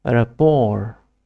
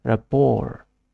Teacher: The last letter T is silent and the stress is on the second syllable.